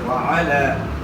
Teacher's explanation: لام کے اوپر کھڑا زبر ہے، تھوڑا کھینچنا ہے۔